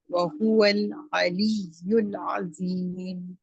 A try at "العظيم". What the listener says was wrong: عظیم عظیم نہیں ہے، ٹھیک ہے. اس کو ذا کو موٹا کرنا ہے انشاءاللہ تعالی.